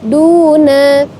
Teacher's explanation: Ada mad tabi'i pada kata duna, pada huruf duna. Karena ada dhammah bertemu dengan waw sukun, maka dibaca 2 harokat atau 1 alif.